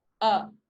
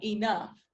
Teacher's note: this sound vowel sound occurs relatively low so your tongue is like low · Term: wedge